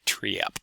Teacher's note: the A vowel moving all the way toward high front, and giving you something almost a little bit diphthongy, so the word trap coming out as something like triap.